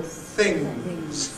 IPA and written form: θɪŋz (things)